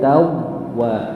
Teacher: Dimonyongkan karena wawu tawwaba. Karena dia wawunya bertasydid.